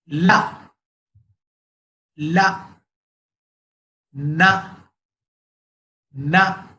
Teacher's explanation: जबान की नोक ऊपर के दांत के मसोड़ों में लगाएंगे